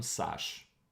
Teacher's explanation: the new vocative case what it does is basically skips the last vowel and leaves the consonant so sasha turns into sash mama turns into mom you have